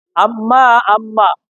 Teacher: দুই ঠোঁটের ভিতর জায়গা হইতে মিম